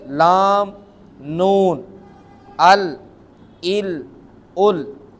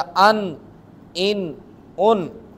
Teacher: ज़ुबान का किनारा ऊपर की चंद दाढ़ों के मसूड़ों से लगें तो उस वक़्त लाम और नून अदा होते हैं